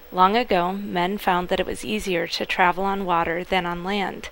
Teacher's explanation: she's got a clear voice it's about G3 sharp on the piano